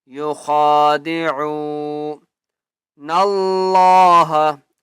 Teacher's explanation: عو، واو مدہ ہے، عین کو ایک الف کی مقدار کھینچ کر پڑھیں گے. یخادعون اللہ، اللہ کا نام موٹا کر کے پڑھیں گے کیونکہ اس سے پہلے نون ہے اور نون کے اوپر زبر ہے.